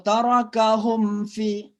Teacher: Mim mati ketemu dengan fa, berarti izhar, jelas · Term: izhar syafawi